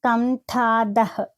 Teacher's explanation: ఇక్కడ ట అనేది మహాప్రాణ అక్షరము ధ అనేది కూడా మహాప్రాణక్షరం